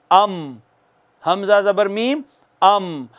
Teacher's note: पढ़ें जरा मेरे बाद, हमजा जबर मीम अम, हमजा जबर मीम अम। अब दोनों होंठों का बाहर वाला खुश्क हिस्सा मिला है तो मीम अदा हुई है। खुश्क हिस्सा मिला है तो मीम अदा हुई है।